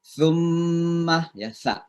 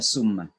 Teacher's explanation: ujung lidah kita seperti digigit tapi didorong pakai udara